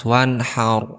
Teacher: dibaca jelas wanhaur kemudian bacanya tidak boleh didengungkan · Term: izhar halqi